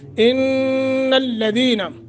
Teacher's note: نون مشدد ہے، غنہ کریں گے۔ ہم، ادغام، ادغام مع الغنہ، ادغام مثلین بھی اس کو کہتے ہیں۔